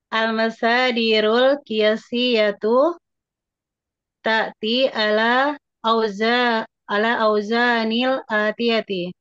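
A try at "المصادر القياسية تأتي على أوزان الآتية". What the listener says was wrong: Bagus gitu.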